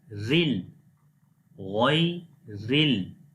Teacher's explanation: Look, the ghain is in the green color, so ghain we read in heavy sound, and ra right now in the black color, means this is light letter now. Ra if comes with kasra, so we read ra in light sound.